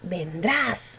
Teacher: Mayor fuerza en qué sílaba? En la sílaba tras.